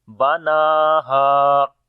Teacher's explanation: Noon we long due to standing fatha on it, and ha we long due to alif madda. Even we stop or even we continue, so we say banaha.